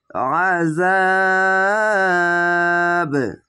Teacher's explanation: বিষয় দেখবেন প্রথমে তিন আলিফ টেনে কল করলা হবে এরকম ভাবে আইনটিকে মোটা করে গলা চিপে